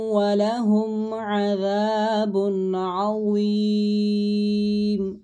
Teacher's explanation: تنوین کے بعد حروف حلقی میں سے عین آ رہا ہے، اس وجہ سے یہاں پر غنہ نہیں بلکہ اظہار کریں گے اور ضا کی ادائیگی درست رکھیں گے۔